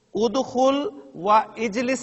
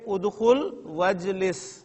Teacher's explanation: دونوں کو جب ملا کر ہم پڑھیں گے تو ادخل و اجلس نہیں کہیں گے بلکہ ادخل وجلس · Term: حمزۃ الوصل